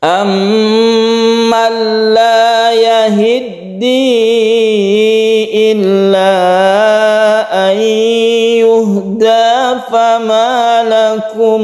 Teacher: Ini ada tasydid mim yang kita sebut dengan gunnah musyaddadah, kita dengungkan